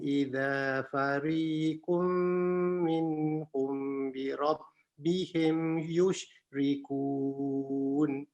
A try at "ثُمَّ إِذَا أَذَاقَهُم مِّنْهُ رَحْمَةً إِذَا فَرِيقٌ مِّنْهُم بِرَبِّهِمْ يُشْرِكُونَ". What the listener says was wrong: Tadi mim bertemu dengan ba, minhum bi rabbihim kurang. Yes, kurang tak didengungkan.